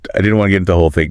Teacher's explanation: Notice how the T in want is completely swallowed by the N. They share the exact same location in the mouth, so the stronger sound, the nasal N, just absorbs the T entirely. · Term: wanna